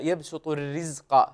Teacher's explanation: رقق الراء ولا تفخمها لأنها مكسورة وهي مرققة عند كل القراء